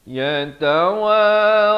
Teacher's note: ta masing-masing satu harakat, wa dan ra masing-masing dua harakat.